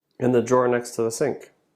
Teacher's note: In and the are function words. They're less important. We say them quickly